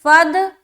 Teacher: تو فا کو دال سے ملایا فد، دال قلقلہ والا حرف ہے نا تو ملا رہے فد، آواز لوٹتی ہوئی معلوم ہوگی. فد، دا، دال کھڑا زبر دا، پھر یہاں پر کھینچیں گے ایک الف کی مقدار کے باقدر.